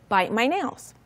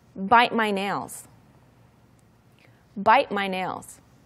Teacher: Now, when you say it, you take off the t sound and you just say bite my nails.